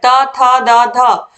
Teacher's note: जो जीभ है वोह दांत को स्पर्श करेंगे